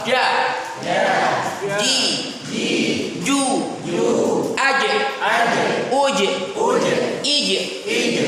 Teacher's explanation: makhrajnya powernya di tengah lidah bukan di pertemuan dua gigi